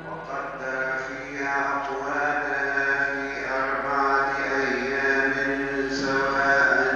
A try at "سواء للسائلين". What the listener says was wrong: مد سواء أربع حركات للسائلين للسائلين مد